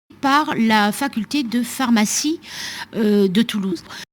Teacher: the R sounds almost like a gap in her sound